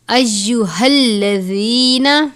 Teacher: گول والی ہا ہے، حلقے آخر سے پڑھتے ہیں